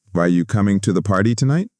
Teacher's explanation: Notice how voice went up at the end.